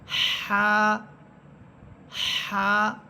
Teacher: এই হায়ের মাখরাজ হচ্ছে কণ্ঠনালীর মধ্যখান, অর্থাৎ গলার মধ্যখান, যেখানে আলা জিহ্বাটা থাকে, ছোট একটি জিহ্বা, ওই স্থান থেকে হা হরফটা উচ্চারিত হবে। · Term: জিমের মতো হা